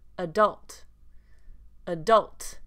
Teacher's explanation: the main difference here with the word adult in American English is the first A has the schwa sound.